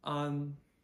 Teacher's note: This is that open wide ah sound, ah, just with an N at the end.